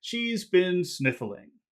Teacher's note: you hear how it falls from high to low